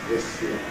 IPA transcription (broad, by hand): ðɪs jɪə